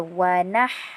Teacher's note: Ha nipis. Okey, ha itu adalah ha di tengah kerongkong. Ha di tengah kerongkong bertanda mati.